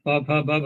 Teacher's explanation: जो उच्चारण का स्थान है जहां वायु टकराती है वह है ओष्ठ इसमें प फ ब आदि ये प वर्ग इत्यादि के वर्ण आ गए।